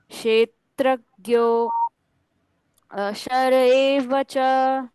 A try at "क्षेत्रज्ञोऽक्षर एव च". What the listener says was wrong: क्षेत्रज्ञोऽक्षर एव च। ज्ञोऽक्षर, क्ष और र का उच्चारण पूर्ण करना है।